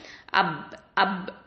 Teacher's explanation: இப்போ அப் அப் அப்படின்னு சொன்னா வாய் மூடி இருக்கும். அப் அப்படின்னு சொன்னா வாய் மூடி இருக்கும், ஏர் வந்து வெளியே போகவே போகாது